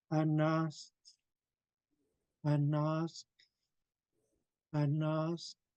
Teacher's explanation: I'm putting the tip of my tongue behind my upper front teeth to make the sound.